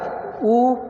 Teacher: ओंठ को गोल कर रहे हैं ना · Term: ओष्ठ